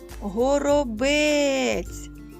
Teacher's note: знову наголос падає на звук е